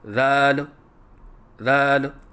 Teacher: بعض بچے ذال کی ادائیگی کے وقت آخر میں لام کے اوپر قلقلہ کرتے ہیں، یہ غلط ہے